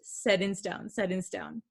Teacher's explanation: we're talking really fast set in stone set in stone okay you can't really hear that t sound